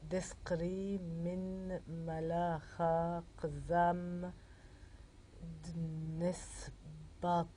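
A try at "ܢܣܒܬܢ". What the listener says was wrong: Nesbten. Nesbten, il n'y a pas de A.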